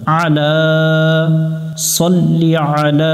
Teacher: সল্লি আ লা, লামের উপরে খাড়া জবর এক আলিফ টানতে হবে, এক লেখা দেখে এক আলিফ টান দিব। আইন অক্ষর সামনে আছে, এটা গলার মধ্য থেকে একটু চেপে উচ্চারণ করব আমরা।